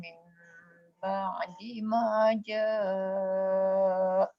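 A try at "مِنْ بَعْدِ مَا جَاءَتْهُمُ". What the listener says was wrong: Dia kalau berhenti kat situ, ja' tu satu kesalahan sebab kalimah tu memang kalimah asal dia ja'a. sebab dia ada jamak, dia memang ja'a kalimah asal dia. Bila berhenti boleh ja'. Tapi disebabkan dalam kalimah tu dia ada jamak, dia kalau ada kalimah hum, him tu semua jamak. Jadi cara nak berhenti tak boleh berhenti tengah jalan.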